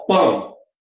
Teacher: Em pão, a gente tem um ditongo nasal decrescente. · Então, o O passa a ser sempre vogal, porque o O, na verdade, tem som de U